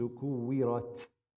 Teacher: careful you don't turn the t into a sa, because kuwirat, that becomes a sin.